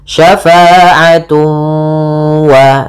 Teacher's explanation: Kemudian pada lafal tun ketemu waw lagi sama sebagaimana syai'an, yaitu ada idgham bi gunnah, cara membacanya ditahan suara wawnya, syafa'atu wa, sambil dimasukkan ke rongga hidung